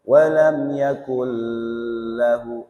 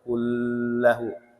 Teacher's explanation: Jadi apabila ada nun sukun atau tanwin bertemu dengan huruf lam dan ro, langsung dimasukkan ke dalam huruf lam dan ro itu, tapi bidun gunnah, tanpa digunnahkan, tanpa didengungkan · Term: idgham bila gunnah